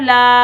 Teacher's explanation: अलिफ मद्दा को हम एक अलिफ की मिकदार में खींच कर अदा करेंगे